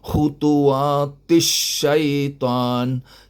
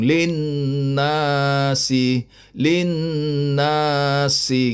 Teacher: Cuma nun saja yang ada dengung.